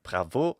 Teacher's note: French doesn't have stress accent in the same way that Italian and English do, but there is a phrase final accent which French has. So when the French say bravo, it sounds like there is a stress at the end of the word, when there kind of is.